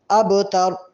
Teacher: ابتر میں با پر کلکلا ہوگا، یعنی آواز ڈبل ہوگی، ہلکا سا ایکو پیدا ہوگا